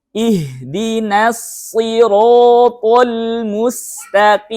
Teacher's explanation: Namun sifatnya saja yang berbeda. Kalau sin rileks ya turun lidahnya, kalau shad naik ke atas ya bagian tengah dan belakangnya, sehingga ruangan sempit, ruangan langit-langit itu. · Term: huruf tebal